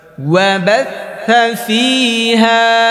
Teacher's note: থায়ের মাখরাজ কোথায়? জিব্বার আগা, দাঁতের আগা।